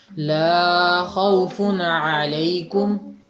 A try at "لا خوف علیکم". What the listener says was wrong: لا کی آواز تھوڑی سی لمبی کر دی آپ نے، 1.5 گنا تقریباً۔ اچھا نیچے